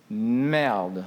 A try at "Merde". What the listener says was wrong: You need to roll your R.